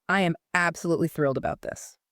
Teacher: Notice how my voice goes up on the word thrilled.